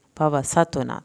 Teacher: تو پہ قلقلہ کرنا ہے، نون کی زبر کو لمبا نہیں کرنا